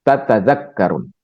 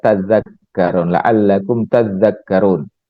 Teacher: Tapi kemudian ta yang kedua itu dihilangkan ya, dihilangkan kemudian dimasukkan, diidghamkan ke dalam zal ya. Jadi zalnya bertasydid